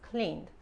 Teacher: como el verbo termina en n, no se pronuncia la e.